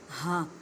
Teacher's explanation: اس ہا کو حلق کے نیچے والے حصے ادا کرنا ہے